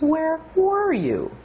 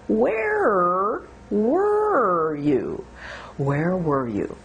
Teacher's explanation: notice that where has two sounds e and uh two vowel sounds and then the r